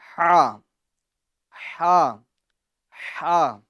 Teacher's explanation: ہا ہا ہا، یہ درمیان حلق سے ادا ہوتی ہیں